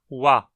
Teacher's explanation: Perceba que a versão labializada da aproximante velar é justamente o som de W, wa. Essa é a consoante labializada mais comum do mundo, tão comum que ela possui um símbolo próprio para ela, que é justamente o W.